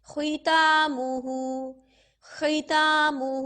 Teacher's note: موٹا ضرور کریں گے لیکن تھوڑا سا، جتنا ہم زبر میں اور پیش میں موٹا کرتے ہیں نا اتنا موٹا نہیں کریں گے. زبر میں اور پیش میں بہت زیادہ موٹا ہوگا، ٹھیک ہے، زیر میں تھوڑا سا کم موٹا ہوگا. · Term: موٹائی کا سب سے نچلا درجہ